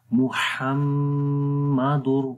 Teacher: تو پڑھیں گے محمد، ہا کی آواز ہے تو ہا ہی پڑھیں گے، ہا گلے کے درمیان والے حصے سے پڑھا جاتا ہے